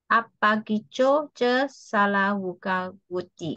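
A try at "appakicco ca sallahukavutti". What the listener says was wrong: Apa kicho ce sal lahuka wuti? Don't try to connect. These are three words. Apa kicho ce sal lahuka wuti? Little strange to you because you might have been chanting in that way before.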